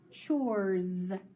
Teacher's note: the s is doing what it's making the z sound